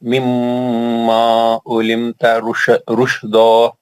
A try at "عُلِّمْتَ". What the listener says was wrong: علمت، تجدید کو سختی سے پڑھنا.